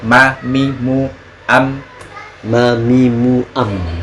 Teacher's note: Betul, betul. Karena kalau nggak tasydid dia agak tengah atau mungkin nggak sempurna masuk ke hidungnya, tapi dia tetap masuk hidung.